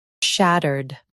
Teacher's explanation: In US, stress shat and keep erd soft.